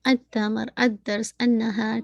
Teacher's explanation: جہاں لام کا ساؤنڈ پروناؤنس نہیں کر رہے تو آپ بتا دیتے ہیں کہ یہ شمسی لیٹرز ہیں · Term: لام کا ادغام